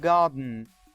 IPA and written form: gɑːdn̩ (garden)